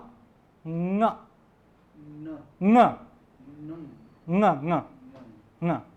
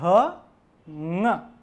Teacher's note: हमारी जो जीवा है वो नासिका और कंठ दोनों से उसका उच्चारण होगा